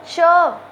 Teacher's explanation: च व्यंजन बोलने में च के साथ अ ध्वनि भी आ रही है